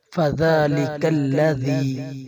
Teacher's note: ذال کے اوپر کھڑی زبر ہے، اسے ایک الف کے برابر کھینچا جائے گا۔